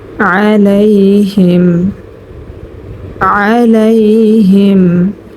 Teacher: আইন হলকের মধ্যখান থেকে স্পষ্টভাবে উচ্চারণ করব।